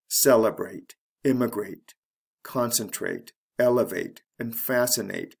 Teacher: they're all three syllable words so the third syllable from the end is actually the first syllable of these words